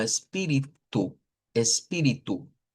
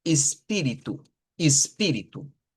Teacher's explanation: en portugués de Brasil, la ES al principio se puede pronunciar como ES y se puede pronunciar como IS, más comúnmente como IS